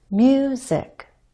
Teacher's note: you and then down in pitch on zik and other words I'm going up on a stress syllable and then I use the following unstressed syllable to step down · I'm going up on a stressed syllable and then I use the following unstressed syllable to step down. Music. I have to go up a little first because if I want to come down, how can I jump down or step down if I'm already standing on the floor? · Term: focus word